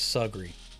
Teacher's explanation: Across the river, where folks like Jacks and Fisher owned millions of dollars worth of undeveloped family land and hunting ground, but still wouldn't be invited anywhere nice, they pronounced the river as Sugary, rhyming the first half with jug and barely giving breath to the end of the word like it hardly mattered.